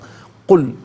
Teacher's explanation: اس قاف کو باریک نہیں پڑھنا، قل اس قاف کو پر کر کے پڑھنا ہے. لام کو نارملی قل.